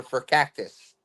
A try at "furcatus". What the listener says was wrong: Furcatus, no cactus. Furcatus.